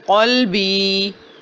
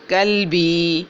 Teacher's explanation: قاف کی آواز ہے موٹی اور جھٹکے والی، اور کاف کی آواز ہے باریک اور بغیر جھٹکے والی